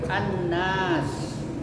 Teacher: sehingga alif lamnya tidak terbaca meskipun tulisannya tetap ada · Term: idgham syamsiyah